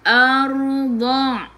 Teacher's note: Sebelum ra ada baris atas, kena baca dengan tebal. Tafkhim. Lidah diangkat ke atas.